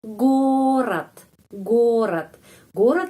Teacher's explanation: belakang kata bunyinya seperti t ya gorat gorat gorat gorat terus penekanan di huruf o jadi huruf o lebih panjang daripada huruf vokal dalam kata ini yang lain